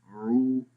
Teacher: पेश की आवाज़ होंठों को गोल करके पढ़ते हैं